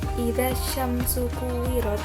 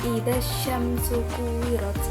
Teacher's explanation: Cara bacanya alnya tidak dibaca, jadi langsung dimasukkan ke dalam shin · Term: alif lam syamsiyah